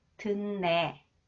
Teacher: 디귿 combines with 니은, it is pronounced 느 sound. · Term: nasalization